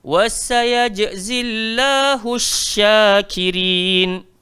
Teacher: shin dia ada tanda sabdu, kita kena belanja lebih sikit.